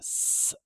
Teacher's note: Same symbol as the English spelling as in the IPA. It's that s sound where we make a very narrow channel of air behind our front teeth and push the air through so forcefully that it makes a high whistling sound